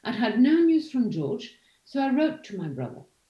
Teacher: you don't place another accent on brother because it's already known